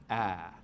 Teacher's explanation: we make it with the tongue cupped down low and towards the front of the mouth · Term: trap vowel